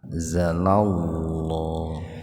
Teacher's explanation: lafaz Allahnya dibaca tebal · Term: tafhim lafzul jalalah